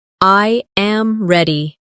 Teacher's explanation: The voice falls naturally at the end.